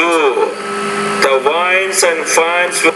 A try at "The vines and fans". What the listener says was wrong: No, it's vines. The vines and fans were left in the van. So with the V, to make it short, doesn't sound like a B. You got to put more vibration there. The vines.